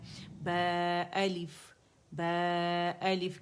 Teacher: अलिफ कबीरा जो है ये इसको खींच रहा है। बा को सिर्फ 2 काउंट खींचेंगे